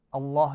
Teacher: اللہ جو ہے یہ موٹا پڑھا جائے گا کیونکہ اس سے پیچھے پیش ہے